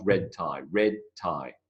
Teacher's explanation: I go straight from the e to the T